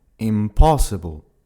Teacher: Tu entends bien que l'accentuation se fait sur la deuxième syllabe